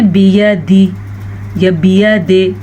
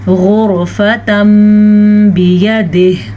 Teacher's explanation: ویسے عام طور پہ ہوتا ہے تا دو زبر تن، لیکن ہم نے اس کو پڑھنا ہے تم، غرفتم بیدہ، اسے اقلاب کا قاعدہ کہتے ہیں۔ وقف کی وجہ سے ہا پہ ہم رک جائیں گے اور ہا کی آواز آنی ضروری ہے